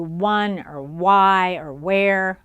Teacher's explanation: so it's lip rounding to begin with